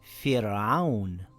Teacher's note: It reads as Fir'aun with a light Ra.